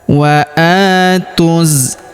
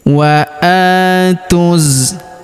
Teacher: Huruf a kita panjangkan 2 harokat karena terdapat alif kecil di atasnya